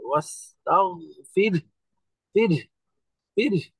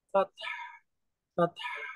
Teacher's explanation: তো হা সুকুনটা পরিষ্কার বাতাস বের হয়ে প্রকাশ পাবে।